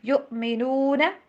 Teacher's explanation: جہاں پہ حمزہ آ جاتی ہے نا وہاں پہ کٹ والی ساؤنڈ ہوتی ہے، ٹھیک ہے، یو جھٹکا نہیں دینا، یو ایسے جھٹکا نہیں دینا بٹ کٹ والی ساؤنڈ۔